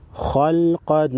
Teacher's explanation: خالام زبر خل، قاف دو زبر قن، خلقن. خا او قاف چې دي دا حروف مستعلیه کې راځي، پیړ به ویلی کېږي، غټ به ویلی کېږي